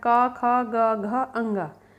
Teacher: घा का उच्चारण स्थान है आपका कंठ